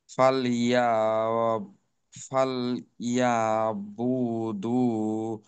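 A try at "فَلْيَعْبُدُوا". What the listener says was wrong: এই দেখেন, পড়ার ধরনটা পরিবর্তন করতে হবে। যেমন ফালইয়াবুদু, এইখানে বুদুতে এতটা সময় দেওয়া যায় না, ফালইয়াবুদু, এভাবে শেষ করতে হবে।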